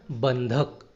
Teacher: तो यहां पर अनुस्वार का उच्चारण नासिक के व्यंजन के रूप में ही सुनाई देता है, अर्थात अनुस्वार एक तरह का व्यंजन ही होता है।